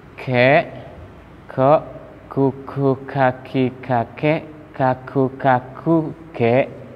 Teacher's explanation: Kaf salah satu sifatnya adalah hamas, mengalirkan udara.